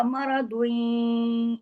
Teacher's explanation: پھر مغدن را موٹا، ضاد بھی ہیوی پڑھا جائے گا، اور اس کی تنوین ختم ہو کر یا کے ساتھ ادغام ہوگا